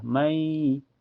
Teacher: nun sukunnya dimasukkan ke ya dan ditahan sampai terasa ke hidung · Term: idgham bigunnah